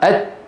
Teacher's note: ات انتبهتوا يعني ياتون بصفه الشده ولا ياتون بصفه مين الهمس لابد من الشده في اولهما والهمس في اخره